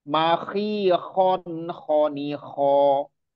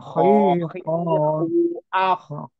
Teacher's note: Jadi huruf kho itu makhrajnya tadi di atas tenggorokan paling atas.